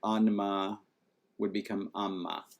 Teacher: Then we had assimilation, and so like anma would become amma.